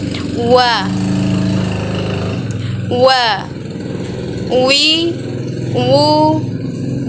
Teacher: diucapkan dengan ilmu syafatain atau mengumpulkan dua bibir kita